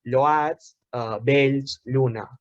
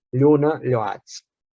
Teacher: Sobre la L llatina inicial, en català es produeix un procés de palatalització. Per molt que la grafia sigui amb una L simple, es passa a pronunciar lla.